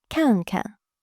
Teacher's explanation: The second 看 becomes neutral tone. Together, 看看. Notice how the second syllable is much lighter and shorter.